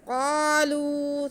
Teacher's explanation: واو ساکن سے پہلے لام پہ پیش ہے، تو یہ واو مدہ ہے، لام کی آواز کو بھی ہم کھینچ کے پڑھیں گے